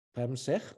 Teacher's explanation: I'm assuming the stress goes on the second syllable.